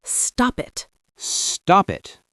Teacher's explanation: But a native speaker pushes the P onto the I. It sounds like stop it. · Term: consonant to vowel